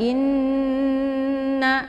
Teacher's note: Untuk membaca "inna", ada hamzah diikuti oleh nun dengan tashdid. Bacalah dengan menekan 'i', menahannya sehingga terdengar suara mendengung . Karena ada nun dengan tashdid di sini, itu disebut ghunnah musyaddadah. · Jadi cara bacanya inna ditekan sambil ditahan 2 harakat. Kemudian dileburkan ke dalam bunyi na.